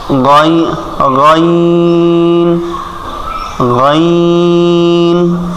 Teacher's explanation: গাইন কোথা থেকে? কণ্ঠনালীর শেষ ভাগ থেকে